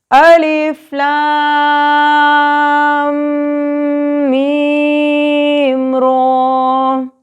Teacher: میم پہ غنہ بھی کرنا ہے اور میم کو لمبا بھی کرنا ہے یعنی کہ اس پر مد کی مقدار کا خیال بھی رکھنا ہے.